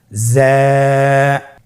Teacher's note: 1 আলিফ টেনে পড়তে হবে। হরফটি বারিক হরফ, এই জন্যে পাতলা করে উচ্চারণ করতে হবে। যা হরফটির মাখরাজ আপনারা দেখতে পাচ্ছেন, জিহ্বার আগা সামনের নিচের 2 দাঁতের পেট ও আগার সঙ্গে লাগিয়ে উচ্চারিত হয়।